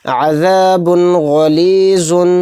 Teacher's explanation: تنوین کے بعد والا حرف غین ہے، اور غین حروف حلقی کے 6 حروف میں سے ایک حرف ہے، ایسے ہی اس میں اظہار کا قاعدہ ہو رہا ہے، اس کو بلا غنہ کے جلد پڑھیں گے